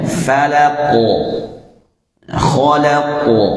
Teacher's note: Kalau huruf qaf setelah tertahan akan keluar sifat qalqalah